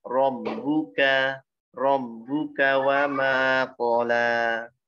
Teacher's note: Wa ma tipis, qafnya tebal.